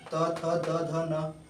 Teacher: दंत को स्पर्श करने वाले त वर्ग